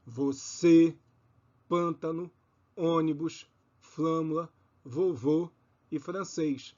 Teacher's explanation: assento circunflexo indica que a vogal é tônica e fechada